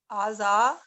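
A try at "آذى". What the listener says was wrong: आ की आवाज जो है ना थोड़ी लंबी रखना जरूरी है।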